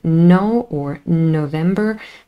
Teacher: the nasal N in no or November makes contact with the alveolar ridge